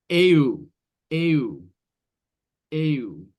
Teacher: the epsilon upsilon and the eta upsilon keeps each distinct vowel sound separate. They don't blend.